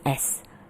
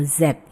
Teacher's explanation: Jadi kalau s termasuk unvoiced karena ketika kita bilang S itu tidak ada getaran